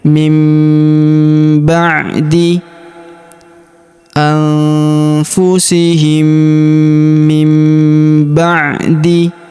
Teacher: Maka nun sukunnya melebur masuk ke huruf ba. Kita baca dengung dan kita tahan dengungnya dua sampai 3 harakat. Nunnya atau nun sukunnya berubah menjadi mim ya.